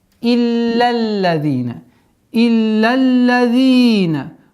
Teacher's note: С огласовки фатха ляма переходим на удвоение 2-го ляма.